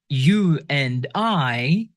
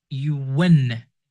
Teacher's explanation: When you pronounce a vowel sounds and your lips around oo, o, or ow, your lips around, slightly around when you pronounce those vowels, and the next word starts with the vowel sounds, try to insert like a W, like a W sound between those vowel sounds